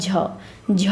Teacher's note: च वर्ग का चौथा व्यंजन है। तो तालव्य महाप्राण और घोष हो जाएगा।